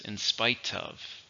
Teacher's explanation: there are 3 words there, each with its own syllable, but spite is what gets the stress.